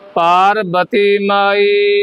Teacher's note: ਬਬਾ ਲੱਗਿਆ ਹੋਇਆ ਬੁੱਲ ਜੋੜ ਕੇ ਬੋਲਾਂਗੇ ਆਪਾਂ